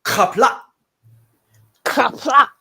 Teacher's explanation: it's got the super guttural sound at the beginning, and it has the qaghwl at the end, so the fast cutoff